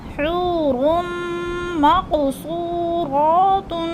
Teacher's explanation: میم مشدد کو را متحرک کے ساتھ ملا کر ادغام کر رہے ہیں